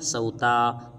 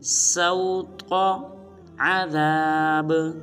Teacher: تا کو لمبا ہرگز نہیں کریں گے بلکہ تا کو پر ادا کریں گے